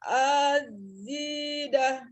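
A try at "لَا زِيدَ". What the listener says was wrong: Ya, la-nya pendek ya. Langsung di zi-nya yang panjang. A-nya tidak panjang.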